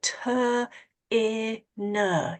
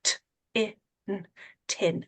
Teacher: You want to get rid of that long sound on the end, which is called a schwa. You just want to make it short and sharp.